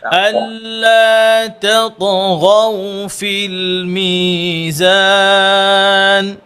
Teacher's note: দুটো তা এবং তা যেন সেপারেট হয়, একসাথে যেন না হয়, মিলে না যায়, দুটো যেন মোটা না হয়, তা ত মোটা গইন মোটা, ওকে।